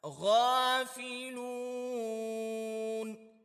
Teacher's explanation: غین کے اوپر کھڑا زبر ہے، تو اس کو ایک الف کی مقدار کھینچنا ہے، دوسرا غین کو موٹا کر کے پڑھنا ہے